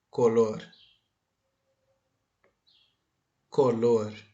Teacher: a sílaba mais forte é Lor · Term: palavra aguda